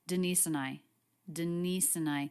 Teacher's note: The word and is reduced. It's just an N sound, quick schwa N